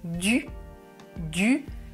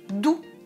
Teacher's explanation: La langue touche les dents. Et ensuite, doux. Je recule la langue.